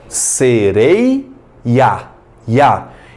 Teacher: Eu tenho um IA ali separado.